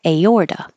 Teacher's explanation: the T changes to a D because it's between two voiced sounds